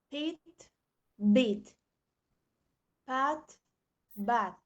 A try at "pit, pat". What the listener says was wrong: saying pat, pit. What is missing there? If you say pit, pat, something is missing. the aspiration, exactly. Let me show you how they should sound. Pit, pat, pot, pull, pride. Can you hear this sound that comes out from my mouth?